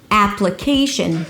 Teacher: the primary stress here is the KEI syllable, ap-luh-KEI-sh'n but you want to emphasize a little bit the first syllable which is the secondary stress here it's the /a/ as in cat.